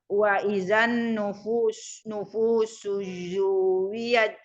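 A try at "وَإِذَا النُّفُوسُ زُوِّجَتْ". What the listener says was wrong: Ya, jadi Ibu wa izannya itu dilamain, Ibu bisa mikir. Maka kalau ada bunyi yang guna dilamain, jangan cepat-cepat. Maksudnya surat apapun kalau ada ketemu guna yang bacaannya ada nun tasydid itu justru kesempatan kita untuk mengingat bunyi berikutnya apa nih, depannya bunyinya bagaimana.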